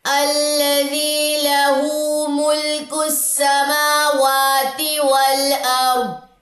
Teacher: را خالی ما قبل زبر، یہ را جو ہے یہ موٹی پڑی جائے گی